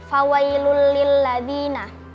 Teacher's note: Hukumnya idgham bunh karena ada domatain bertemu dengan huruf lam dibaca melebur tanpa mendengung.